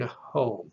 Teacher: you will still hear the he as an aspirated velar